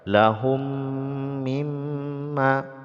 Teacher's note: mim bertemu mim ini diidghamkan ya disebut dengan Idgham Mimi karena memasukkan mim ke dalam mim · mim hukumnya idgham ya idgham mimi jadi didengungkan kadar dua harakat begitu juga mim yang bertasdid ini didengungkan Qadar dua harakat · Mim sukun bertemu dengan mim, hukumnya idgham ya, idgham mimi, jadi didengungkan kadar 2 harokat. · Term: gunnah